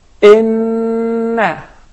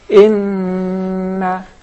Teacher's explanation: adding the ghunnah, that sound of nasalization which comes from the nose